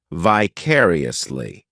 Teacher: the fourth syllable has the schah sound